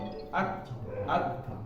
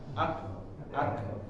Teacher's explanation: suaranya tertahan kemudian ada angin keluar sedikit ya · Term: syiddah